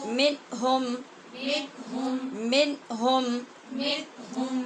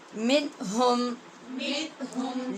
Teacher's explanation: من کے نون پہ بھی اظہار ہے اور ہم کے میم پر بھی اظہار ہے